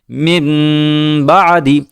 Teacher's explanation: جیسے یہاں بھی من بعدی، میم کے بعد نون ہے اور اس کے بعد با ہے، لیکن نون کی آواز کو ختم کر دیا اور نون کی آواز کو میم کی آواز سے بدل دیا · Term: اقلاب